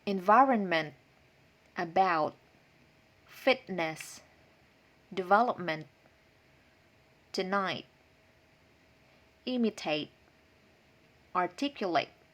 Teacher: stop t in the middle or at the end of a word